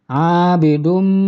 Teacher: Abidum ini adalah idgham bi gunnah atau idgham ma'al gunnah. Sebab tanwin dhammah menghadapi huruf mim. Kemudian bacaannya didengungkan.